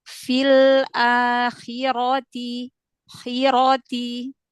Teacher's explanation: Tebalkan, angkat pangkal lidah, ro fathah.